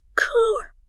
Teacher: So one of the biggest ones mentioned is the R sound. In most American English, you clearly hear that R sound after a vowel. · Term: rottic R, rhotic R